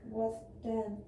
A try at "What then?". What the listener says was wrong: Nope, you're saying den. Can you hear it, class, in her voice? She's saying D-E-N.